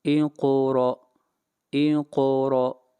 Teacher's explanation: قاف یہاں پر قلقلہ ہوگا، قاف کو موٹا پڑا جائے گا